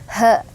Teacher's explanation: Ha itu keluarnya di bagian bawah tenggorokan ya, arah ke dada. Jadi ha gitu.